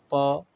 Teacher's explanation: ओष्ठ आपस में चिपक रहे हैं